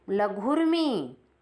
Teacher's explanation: लघु का ऊ और उर्मी का ऊ दोनों मिलकर दीर्घ ऊ बनेंगे, इसलिए लघुर्मी।